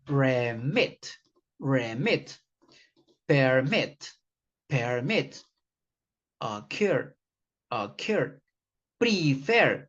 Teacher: The second pattern is that they have the stress in the final syllable, in the final sound